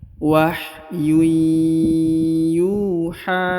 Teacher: Huruf ha dipanjangkan 2 harokat karena di atasnya terdapat tanda alif kecil yang ini ya.